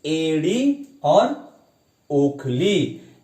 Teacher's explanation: अर्ध संवृत मतलब हमारा मुख आधा बंद है।